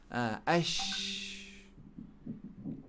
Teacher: Salah sifat huruf. Sifat huruf shin ni rahawa. Suara terlepas.